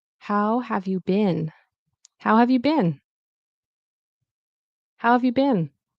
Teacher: So how, and it's technically pronounced bean, but Americans and Canadians will say bin, like bin. Okay.